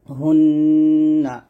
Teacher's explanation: জিহ্বার আগাটা উপরে তালুর সঙ্গে লাগিয়ে গুণ্যটা আদায় হবে